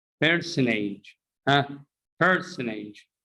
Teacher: here is n followed by t so we drop t